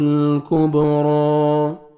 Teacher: با حروف قلقلہ میں سے ہے، ڈبل ساؤنڈ آئے گا۔ را کو آپ نے 1 سیکنڈ کھینچنا ہے، اور را کو مرزبر ہے، کھڑا زبر آپ نے موٹا بھی کرنا ہے۔